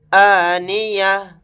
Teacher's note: آیت کرتے ہوئے تا کی جگہ ہا ساکن کی آواز نکالیں گے